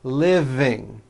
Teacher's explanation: the V is voiced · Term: voiced V